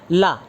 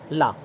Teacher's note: ला बोलने के समय आपकी जीभ सेंटर में होगी और साइड से आपकी हवा निकलेगी जीभ के साइड से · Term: पार्श्विक व्यंजन